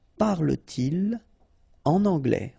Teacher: So no liaison after your pronoun, okay?